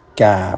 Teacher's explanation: Istifal, yakni pangkal lidah tidak dinaikkan sehingga suara menjadi tipis